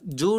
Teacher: ஜூன் சொல்லும் பொழுது வாய் நல்லா குவிஞ்சு வாயிலிருந்து காற்று வெளியேறும்